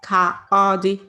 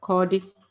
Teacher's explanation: if you look at it, it reads ka-odi, but when we are saying it, what you actually hear is kodi. So you can say the a and the o together.